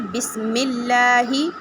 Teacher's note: بسم اللہ میں ہم لفظ اللہ کے لام کو باریک پڑھیں گے